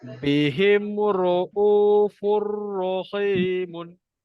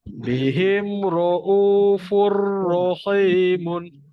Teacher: Kalau huruf ro, masuk, tak dengung. Masuk tak dengung, maknanya tak ada dengung lah. Jadi bacaan dia akan jadi Furrohimun.